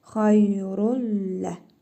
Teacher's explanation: İdğam-ı biləqunnə qaydasına görə tənvindəki nun hərfini oxumuruq. Ləm hərfini isə şəddəli tələffüz edirik. Xayrullə. Xayrun demirik.